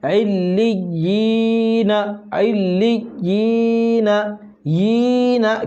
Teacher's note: یا مدہ کو تھوڑا کھینچ کے پڑھتے ہیں